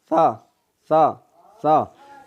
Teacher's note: زبان کا سرا اور اوپر والے دانتوں کے اندرونی کنارہ سے یہ سا ادا ہوتا ہے. یہ آپ زبان کو اوپر والے دانتوں سے نیچے لگائیں.